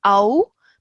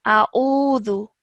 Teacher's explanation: Just be careful at the beginning over here. Alif is separate to Ain. Okay, so there are two separate sounds that we're making. So sometimes it's very easy to just merge the two sounds together like Au, but actually that's wrong.